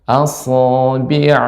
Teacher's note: dia sifatnya isti'la, tebal. Namun bukan dengan bantuan bibir dimonyongkan.